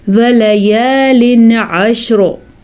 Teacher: پھر سے را پر، کیونکہ را ساکن، را سے پہلے شین ساکن اور اس سے پہلے عین کے اوپر زبر ہے، اسی لیے یہ را پر پڑھی جائے گی